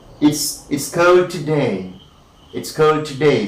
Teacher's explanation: So question tag here again, right? Today you have the falling tune.